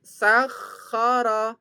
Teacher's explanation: Pada pelafatan kho, maka pelafatannya kita seperti kayak membuang riak, dahak